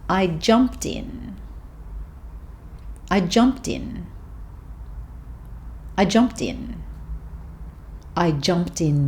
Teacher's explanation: jumped, which ends with a consonant sound, and in, which begins with a vowel sound. So these two words can be joined together to make one long word.